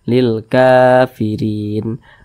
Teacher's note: Di atas huruf K ada alif kecil berdiri di atasnya, maka huruf K ini dibaca panjang, mad tabi'i. Panjangnya 2 harakat atau kira-kira 2 ketukan.